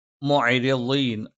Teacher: അല്പം നേർപ്പിച്ച ശബ്ദമായിരിക്കും. മുഅരിളീൻ, ള നാവിൻ്റെ വലതുഭാഗമോ ഇടതുഭാഗമോ ആ ഭാഗത്തുള്ള അണപ്പല്ലിലേക്ക് ചേർത്ത് വെക്കുക. ന നാവിൻ്റെ അറ്റം മേലെ മുൻപല്ലിൻ്റെ മോണയിലാണ്.